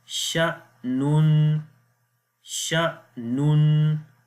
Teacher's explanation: So the rule is that whenever hamza comes with a sukoon sign, we make a jerk sound there